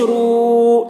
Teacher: واو مدہ کو ایک الف کے برابر کھینچ کر پڑھیں گے